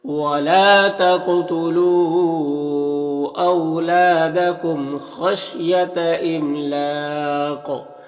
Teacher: یہاں پر جو ہے مد عارض وقفی ہوگا اور ساتھ میں قلقلہ بھی ہوگا، اور قاف حروف مستعلیہ میں سے تو اسے پر بھی پڑھیں گے